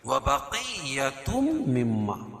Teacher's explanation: تنوین کے بعد ادغام مع الغنہ کے 4 حرفوں میں سے کیا ہے؟ میم ہے، تو یہاں غنہ کر کے پڑھیں گے